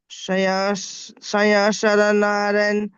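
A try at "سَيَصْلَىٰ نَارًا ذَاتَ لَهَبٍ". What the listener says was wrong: পরিষ্কার করেন জবানকে স্পিড করবেন না, একদম পুরো মানে স্লো মোশনে পড়বেন আপনি। সায়াস লা, এই লাটা আপনার মানে পরিষ্কার হচ্ছে না। সায়াস লা নারাম।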